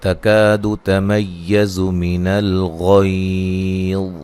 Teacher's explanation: تا کو باریک پڑھنا ہے، کاف بھی باریک ہے